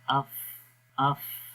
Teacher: تو آپ بولیں گے اف، تو جب اف بولتے ہیں تو آخر میں آپ دیکھیں کہ آپ کی زبان، آپ کے ثنایا علیہ کے جو کنارے ہیں وہ نیچے والے ہونٹ کے تر حصے پہ لگ رہے ہیں، ٹھیک ہے۔ تو یہی اس کا مخرج ہے، اف اف۔